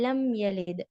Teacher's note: تو یہاں پر میم کو ہمیں پورا ظاہر کرنا ہے اور گننا نہیں کرنا. ہاں لم ایسے ایک دم گننا نہیں کرنا ہے. · اور یہ اظہار شفوی ہے، کیوں؟ بیکاز میم ہمارے لپس کا لیٹر ہے، اسی لیے اظہار شفوی